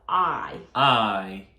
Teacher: 알파벳 I는 입을 아 벌려주시고 이 해주시면 될 것 같아요